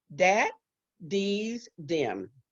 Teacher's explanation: All of those languages were absent. They did not have a TH sound, none of those 6, but they all substituted the same sound for the TH, and that sound was D.